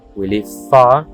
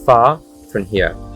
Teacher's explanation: We live far, fíjate cómo la R no se pronuncia, sino que se alarga el sonido de la A